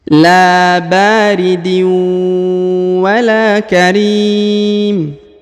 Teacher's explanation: huruf la dipanjangkan 2 harokat karena di depannya terdapat alif